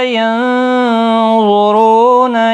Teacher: نون ساکن کا اخفا ہوگا، ضا مستعلیہ ہے، پر پڑھا جائے گا